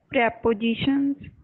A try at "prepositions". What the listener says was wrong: Prepositions. Jitions नहीं है, Z. Prepositions.